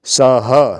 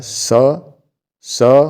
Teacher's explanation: जो विसर्ग लग गया तो इसके साथ ह जुड़ जाएगा लिखने में नहीं आएगा लेकिन बोलने में आएगा